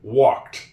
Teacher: This L in walked. It is a silent L. I don't hear it when I say it, walked. And I don't hear it when people say it to me.